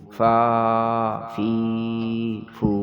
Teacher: اوپر کے دانت اور نیچے کے ہونٹ جب ملیں گے تو فا نکلے گی، فا کھڑا زبر فا، فا کھڑی زیر فی، فا الٹا پیش فو، فا فی فو۔